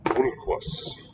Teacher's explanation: the L in syllable 1 is vocalic, but it was accented, unusually